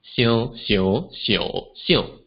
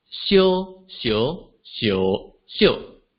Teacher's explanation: the word on the left, xiu, or think, is lower in pitch, while the word on the right, xiu or hot, is higher in pitch. So similarly, if I recreate the 4 tones of Mandarin Chinese for xiu, it will sound something like xiu, xiu, xiu, xiu, versus xiu, xiu, xiu, xiu.